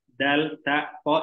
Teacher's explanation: Dal, ta, po itu makhrajnya berdekatan, yaitu ujung lidah bertemu dengan pangkal gigi seri atas